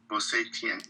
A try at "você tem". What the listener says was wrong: Tang. Your TI sound makes a chi. T makes te. Yeah, TI only. Você tang. Rhymes with Tulu bang. Tang. Like the flavor, tang. Like it's tangy. Tang. Você tang. Say tang.